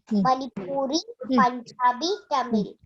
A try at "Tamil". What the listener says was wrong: Tamil. Very good.